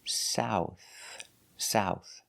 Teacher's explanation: the TH is making the soft air sound, like think and thank you.